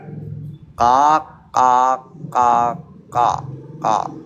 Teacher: huruf qo itu seperti huruf q Indonesia tambah lidah belakang ya lidah belakang yang naik